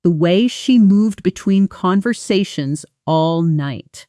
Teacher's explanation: Notice between conversations almost fuses into one flowing sound. The N softening right into the next word.